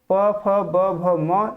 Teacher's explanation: प वर्ग के ध्वनियों का जो उच्चारण स्थान है ये ओष्ठ है, इसी कारण इसको ओष्ठ ध्वनि कहा जाता है।